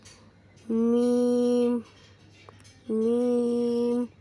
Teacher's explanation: دونوں ہونٹوں کے خشکی سے یعنی سوکھے حصے سے